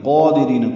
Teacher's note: قادرین، قاف پر، اس کا کھڑا زبر بھی پر ہے، قائم مقام مد اصلی ہے، را باریک ہے، ری آئے مدہ ہے، 2 حرکات لمبا کرنا ہے